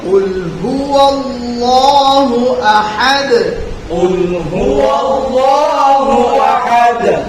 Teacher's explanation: ওয়ার সাথে লামটাকে জুড়বে ওয়াল্লাহ মোটা হবে আল্লাহ শব্দের লাম